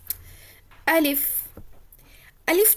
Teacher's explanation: अलिफ जो निकलता है वह मुह के खाली हिस्से से निकलता है · الف جو نکلتا ہے وہ منہ کے خالی حصے سے نکلتا ہے